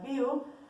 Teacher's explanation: en la sílaba viu se unen dos vocales cerradas, la I y la U.